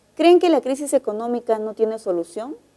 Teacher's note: esa es una pregunta y el tono final es ascendente